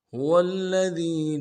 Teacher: واو کو لام کے ساتھ ملائیں گے، لام کے اوپر تشدید زور دیں گے۔